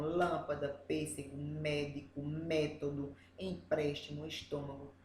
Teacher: a palavra é uma proparoxítona, que ela tem a antepenúltima sílaba mais forte